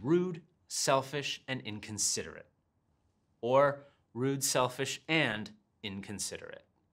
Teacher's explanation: i have nice flow and my intonation goes down